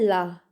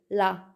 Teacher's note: वो ध्वनियाँ जिनका उच्चारण करते समय जो हवा होती है वो जीवा के दोनों भागों से बाहर निकलती है, उसे कहते हैं पार्श्विक व्यंजन।